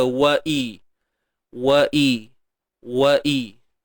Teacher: Okey, huruf waw berbaris atas wa bunyi dia. Kemudian hamzah baris bawah. Datang daripada pangkal kerongkong kita